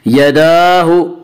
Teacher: यदाहु दाल के ऊपर खड़ा ज़बर है, खड़ा ज़बर को एक अलिफ के बराबर खींच कर पढ़ेंगे।